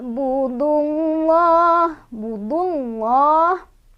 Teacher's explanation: Lafaz Allahnya dibaca secara tafkhim atau tebal.